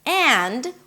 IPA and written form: ænd (and)